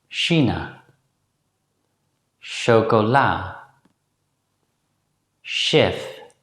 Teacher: As you may have noticed, the Dutch consonant sequence sh sounds very similar to the consonant in the English word ash. But the lips are slightly less protruding when the Dutch consonant sequence sh is pronounced.